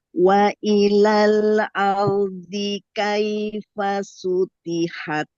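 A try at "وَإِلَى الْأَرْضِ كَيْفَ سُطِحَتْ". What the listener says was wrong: Tebalkan lagi to-nya. Kalau ta ti, kalau to pui, ti pui. Pui. Lagi tebal lagi.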